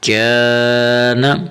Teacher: کاف الف زبر کا، نون زبر نہ، کان. اسے اکثر بچے پڑھتے ہیں جو غلط پڑھتے ہیں، قان یا قان. منہ کو گول نہیں کرنا ہے